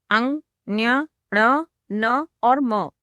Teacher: यहाँ पर देखिए, प्रत्येक वर्ग का जो 5वां अक्षर है वह थोड़ा अलग है। इन्हें बोलने के लिए इनके उच्चारण स्थान के साथ साथ नाक का भी उपयोग करना पड़ता है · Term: अनुनासिक स्वर